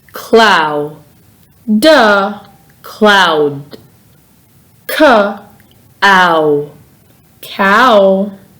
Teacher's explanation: your tongue stays in the lower part of your mouth when pronouncing the sound ow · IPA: /aʊ/